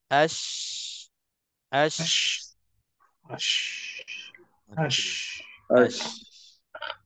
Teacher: Jadi beza antara safir dengan tafashi iaitulah tempoh. Tempoh yang ada pada huruf shin.